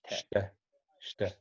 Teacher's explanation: We barely pronounce the E, and we kind of roll over the T.